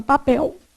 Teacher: quando você fala papel embora você faça o som de u sua boca enruga muito pouco faz assim ó papel não é uma coisa menos enrugadinho do